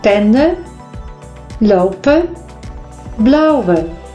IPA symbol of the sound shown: ə